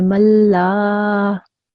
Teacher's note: So after the lam, there is an alif, okay? So that means you have to make the lam sound a bit long